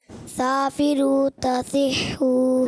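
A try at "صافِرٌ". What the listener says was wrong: देखिए साफिरू में सीन नहीं अदा हो रहा है, ऐसा लग रहा है सा है। नहीं, सा में सीटी नहीं आती ना, तो सीन में तो सीटी आती है।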